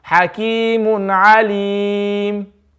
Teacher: you're reading sakin, but you're indicating the lips towards the dhamma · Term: Ishmam